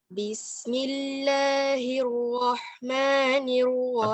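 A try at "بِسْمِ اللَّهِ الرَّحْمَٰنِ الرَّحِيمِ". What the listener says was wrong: Okey, bukan ra. Sebab tu kita tak semucung di huruf bahagian atas. Sebab dia tak clear bunyi bahagian atas. Hak kedua tu dia bunyi macam campur dengan waw yang terlalu banyak. Ar-ra. Ar-ra bukan ar-ra. Jangan muncul dah. Walaupun tak nampak mulut tapi gitulah bacaan dia. Kita nak buka ar-ra. Satu lagi huruf ra ni kita nak sebutan kita tu dilontar keluar, bukan kita tarik ke dalam. Ar-ra.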